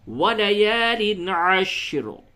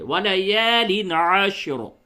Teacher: حالت وقف میں وَلَيَالٍ عَشْرٍ، را کو پر پڑھے